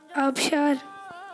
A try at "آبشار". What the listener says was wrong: وہ الف مدہ سے ہوگا حضور، الف سے نہیں ہے آبشار.